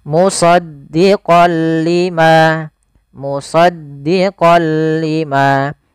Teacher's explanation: diganti menjadi huruf lam maka Kenapa dinamakan Idam Idam artinya memasukkan memasukkan apa suara nunnya kepada huruf lam tapi tidak boleh disertai dengan gunah · Awalnya kalau kita baca musaddiqan, karena bertemu dengan huruf lam, tanwinnya masuk ke huruf lam. Suara n-nya dihilangkan diganti menjadi huruf lam. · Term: Idgham bila gunah, idgham bila gunnah